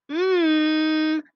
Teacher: when i make the sound m i go um but when i pinch my nose you can't hear the sound anymore